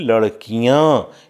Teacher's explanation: लड़कियां, यहाँ पर आप देखिए क में ई लघु ध्वनि उच्चरित होती है।